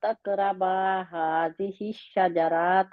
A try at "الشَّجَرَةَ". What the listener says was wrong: راتا نہیں ہے، را کے آگے الف نہیں۔